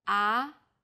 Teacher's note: the second tone starts with a middle pitch then Rises quickly